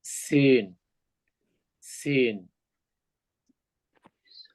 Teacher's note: জিহ্বার মাথা দুই দাঁতের পেটের সাথে লাগাইয়া উচ্চারিত হবে